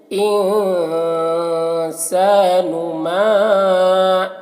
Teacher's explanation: मीम में मद है तो इसे ज़्यादा खींचेंगे।